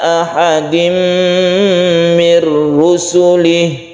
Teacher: tanwin bertemu dengan mim idgham bi gunnah